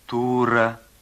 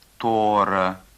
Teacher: В верховом диалекте чувашского языка звук «о» может употребляться в первом слоге вместо литературного «у»